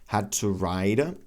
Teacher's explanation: the T is pronounced as a flap D